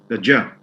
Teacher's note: The ja, which is voiced palato-alveolar, voiced palato-alveolar affricate.